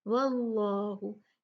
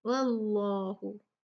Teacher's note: अल्लाह सुब्हानहु व तआला के नाम के लाम को मोटा पढ़ा जाएगा इसलिए कि उससे पहले वाला हर्फ वाव है और उस पे फतहा यानी उस पे ज़बर है